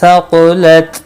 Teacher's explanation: नून का इख्फा होगा। क़ाफ मुस्तालिया है, पुर पढ़ा जाएगा। ता साकिन को हिलाना नहीं।